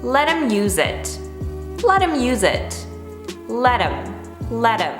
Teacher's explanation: them let t is not in between the two vowels but we don't pronounce them as them we actually reduce it to m it's a contraction so we're saying latim him and in that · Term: flap tee